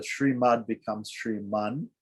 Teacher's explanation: Shriman is simply because of the N letter at the beginning of Narayana. The Shrimad becomes Shriman, right? The D changes to an N. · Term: Sandhi